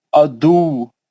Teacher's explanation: ادو بول کے ہلکا نہیں پڑھیں گے، واؤ کو ہلائیں گے پکڑ کے، سختی سے روکیں گے اس کو، واؤ پہ شدت کریں گے